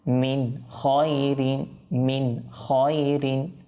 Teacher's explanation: নুন সাকিন অথবা তানবিনের পর যদি আপনি ইজহারে হরফ দেখেন তখন আপনি কোন গুন্না ব্যতীত স্পষ্ট করে পড়বেন